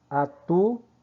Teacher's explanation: esse U se separa do OU, hiato.